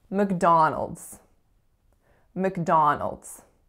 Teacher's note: the other two syllables are in fact being reduced to schwa